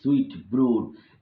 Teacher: two spondees which are metrical feet consisting of two stressed syllables